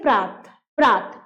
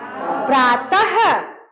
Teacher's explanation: विसर्ग युक्त कोई जो शब्द रहेगा तो उच्चारण इस तरह करेंगे कि अंत में क्या आनी चाहिए? ह, लगे कि ह आ रहा है।